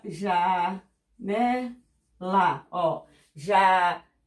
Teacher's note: janela, ó, a penúltima sílaba, a mais forte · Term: paroxítonas